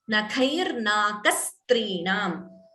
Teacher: dvitvam before strinam, the s is doubling